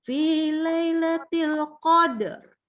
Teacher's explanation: ini sempurna dulu dalnya, qad, baru r.